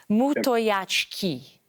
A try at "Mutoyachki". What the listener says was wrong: It's close. So, okay, it's Mutoyachki. Mutoyachki. Kind of the same, but yeah, just not the ch sound, I guess.